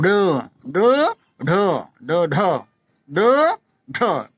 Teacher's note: तीसरा है उत्क्षिप्त, उत्क्षिप्त क्या होते हैं, ये वो अक्षर होते हैं जिनके उच्चारण में जीभ की नोक ताल को कुछ दूर तक छूकर मुख द्वार को झटके से खोलती है।